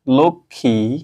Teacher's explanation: ম ফালাটা দেখো এখানে উচ্চারণ হচ্ছে না